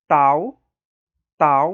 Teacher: você precisa encostar a ponta da língua no palato, né, logo atrás dos dentes incisivos. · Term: dental